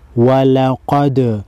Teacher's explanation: واو زبر وا، لام زبر لا، ولا، قاف دال زبر قد، وَلَقَدْ، دال ساکن کو ہلا کر پڑھیں گے کیونکہ دال حروف قلقلہ میں سے ہے۔